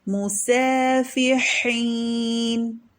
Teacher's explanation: میم پر ضمہ ہے اور یہ آگے سین ہے، تو اس سین کو ہم ترقیق سے پڑھیں گے